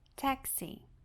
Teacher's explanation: E o nosso próximo meio de transporte é o taxi, que também pode ser chamada de taxi cab ou cab. É uma palavra com duas sílabas, a primeira é a mais forte